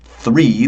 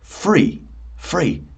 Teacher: some English people who say it like an F. They don't say three, they say free.